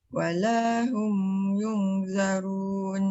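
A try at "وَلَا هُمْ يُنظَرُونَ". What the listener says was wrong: Jangan zarun, dia nipis. Walahum wa. Sebab tu lidah tu terangkat. Yunzarun.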